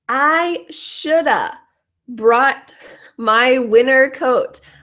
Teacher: NT NT you will uh you'll notice that the pronunciation here we can say winner no t or we could add the T both are fine